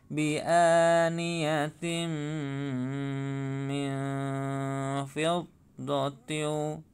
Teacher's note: ini kasroh tamrin bertemu dengan mim, bacaan idgham bi gunnah. Maka dibaca bi'aniyatim min fiddatin.